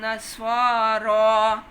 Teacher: دونوں الف ایک جتنے ہیں، سواد کا بھی اور را کا